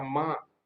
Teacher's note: होठों से होगा, लेकिन उसके साथ नाक का भी प्रयोग होगा, माँ। अगर आप नाक बंद कर दोगे तो माँ नहीं बोल पाओगे सही से, माँ ऐसे हो जाएगा, उसका शुद्ध उच्चारण नहीं हो पाएगा।